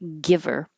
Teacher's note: connect the V to the ER